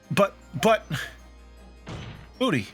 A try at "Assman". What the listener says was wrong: No, it's pronounced ass. Ass man. not butt man.